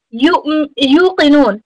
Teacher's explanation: make sure the qaf is from huruf tafkhim. Again, make sure that you have a full mouth there. Extend with the waw sukoon, inshallah.